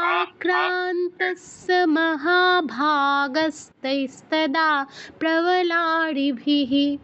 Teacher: আতে একটু দীর্ঘ করতে হবে, আক্রান্তস্য, কারণ আ তো দীর্ঘস্বর